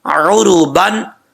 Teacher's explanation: عین کو پڑھتے وقت آپ نے خاص خیال رکھنا ہے کہ حمزہ کا ساؤنڈ نہیں آنا چاہیے